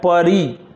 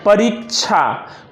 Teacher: तो जैसे अगर हम लोगों को लिखना हो परीक्षा, तो परी री पे जोर पड़ रहा है, अर्थात उस पे ज्यादा समय लग रहा है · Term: दीर्घ ई